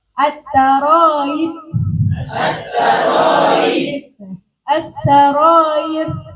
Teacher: hamzahnya di kasroh, maka antara hamzah dan ya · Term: tasil